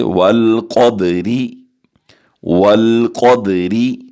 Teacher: Next وَالْقَدْرِ خَيْرِهِ، جو قاف ہے یہ حروف مستعلیہ میں سے ہے، ہم اسے پر کر کے پڑھیں گے، اور دال پر ہم کلکلہ کریں گے، یہ حروف کلکلہ میں سے ہے، اور را کو باریک پڑھیں گے، کیسے؟